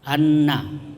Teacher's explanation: gunnah itu mendengung. Kalau ada nun bertasdid